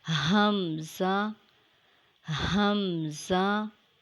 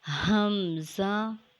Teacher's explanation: Hamza is a light sound letter. It is also pronounced from the deepest part of the throat.